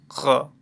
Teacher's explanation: इसमें एकदम टकराना नहीं है जीभ को, क की तरह टकराना नहीं है, थोड़ा सा स्पर्श कराना है, ख। ठीक है, और ये जो बोले जाने वाला स्थान है इसका वो है कंठ प्लस जिह्वा मूल।